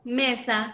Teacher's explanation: se carga la voz en la penúltima sílaba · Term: palabras graves